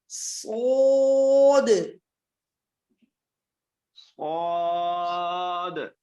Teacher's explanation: اس کو موٹا بھی کریں گے اور سیٹی کی آواز بھی نکالیں گے